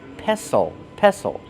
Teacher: A mortar and pestle. The T is silent. Don't pronounce the T.